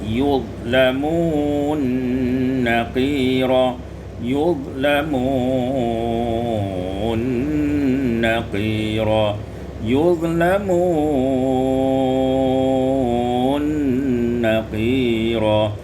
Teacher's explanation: idghamun nun fin nun, ya diidghamkan nun pada nun